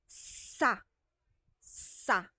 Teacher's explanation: yung dila natin ay umaakyat sa gilagid natin. Walang tunog. Sut-sut lang. Pasut-sut lang. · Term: Pagpagilagid